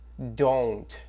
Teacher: o don't a gente não vai pronunciar o T, don't, ok?